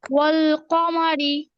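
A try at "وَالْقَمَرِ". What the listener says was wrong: ওয়াল না, হ্যাঁ ওয়া, ওয়া ওয়াল কমারি। ওয়াল, ওয়া ওয়াও জবর ওয়া। ওই যে আমরা কি বলছিলাম, আমরা ওয়াওয়ের মাখরাজি পড়ছিলাম এরকম, যে দুই ঠোঁট গোল করে মাঝে সামান্য ফাঁকা রেখে, তাই না? ওয়া, ওয়াল কমারি।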